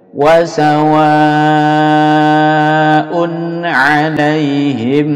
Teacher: wa dipanjangkan sampai 6 harokat 6 hitungan jari